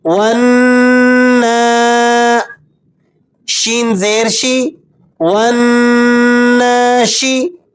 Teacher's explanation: نون پر کھڑا زبر ہے تو اسے آپ نے 2 حرکتوں جتنا کھینچنا ہے